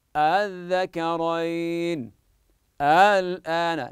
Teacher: تسهلها بين الهمزه والالف من دون مد وانما بالقصر حركتين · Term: تسهيل الهمزه الثانيه